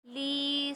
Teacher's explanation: لی میں یا مدہ ہے، اس کو ایک الف ہی مقدار کھینچ کے پڑھیں گے